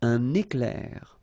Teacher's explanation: So you can see I make this little liaison between the two